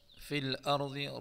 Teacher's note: را اور ضا دونوں کو پر پڑھیں گے